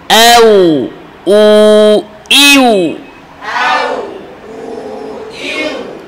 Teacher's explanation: ইউ ইউ এও উ ইউ জোরে বলতে হবে এও উ ইউ আওয়াজ জারি ওয়াওয়ে পরিপূর্ণ নাকে যেন আওয়াজ না যায়